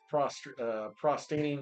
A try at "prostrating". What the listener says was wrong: Prostrating, not prostating.